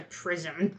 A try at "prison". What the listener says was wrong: Oh, sounded like you said prism.